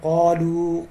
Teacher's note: قاف کو موٹا پڑھنا ہے, اس کے اوپر مد ہے, مد بھی کرنی ہے.